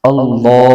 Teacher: अल्लाह के नाम से पहले जबर है इसको अल्लाह के नाम को मोटा करके पढ़ेंगे